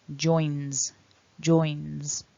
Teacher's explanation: And then with the third person, again because of the n, we want to voice the s. So it's not a s, it's a z